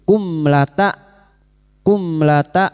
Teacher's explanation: Mim sukun bertemu lam idhar syafawi. Mim sukun dibaca jelas tanpa mendengung.